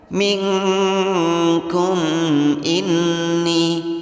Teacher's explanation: Ming di sini nun sukun yang bertemu dengan huruf kaf. Hukum bacaan ikhfa disamarkan 2 ketukan, artinya jangan dibaca min atau jangan dibaca n tapi dibaca eng.